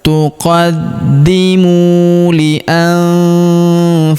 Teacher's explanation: Huruf mu kita panjangkan 2 harokat karena wawu sukun di depannya